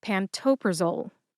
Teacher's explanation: Put all four syllables together and you get pantopraole. Emphasize toe. That's the second syllable.